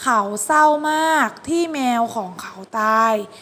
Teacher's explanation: เศร้ามันไม่ได้ออกเสียงตัวรอเรือเลย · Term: คำควบกล้ำไม่แท้